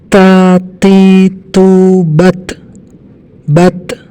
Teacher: Huruf ta ada angin sedikit yang keluar dari pengucapan makhrajnya. Karena dia punya sifat hamas.